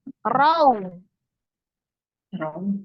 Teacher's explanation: Ro-nya dibaca tebal karena fathah. Raw. Alifnya yang sesudah waw, itu namanya alif sifar dianggap tidak ada ya.